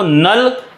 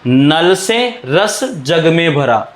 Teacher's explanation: वे वर्ण वो व्यंजन जिनके उच्चारण में जिभ्या नोक मसूड़ों को स्पर्श करती है। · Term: वतशर्य वर्ण